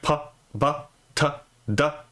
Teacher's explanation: So a plosive is made by a buildup of pressure that, like p, b, t, d. Those aren't continuous sounds. You can't really hold those sounds. They are made by a buildup of pressure that is then released